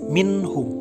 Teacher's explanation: izhar halki, di mana nun mati bertemu ha, dibacanya jelas minhum. Izhar syafawi dibaca jelas, mim sukun bertemu selain huruf mim dan ba pada hijaiyah. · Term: izhar halqi